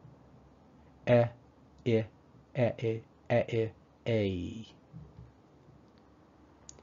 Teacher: think of the EY sound as a short E and a short I merged together